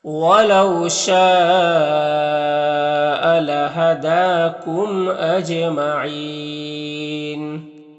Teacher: دال میں کھڑا زبر ہے جو الف مدہ کی طور ہوتا ہے، میم میں اظہار شفوی ہوگا، اور جیم حروف قلقلہ میں سے ہے اور اس کے اوپر جزم بھی ہے، تو جیم میں قلقلہ ہوگا، یعنی جیم کو ادا کرتے وقت جیم کی آواز اپنے مخرج سے ٹکر کھا کر الگ ہو جائے گی، اور یہاں پر وقف کریں گے تو مد عارض وقفی ہوگا، تو اس طرح سے پڑھیں گے۔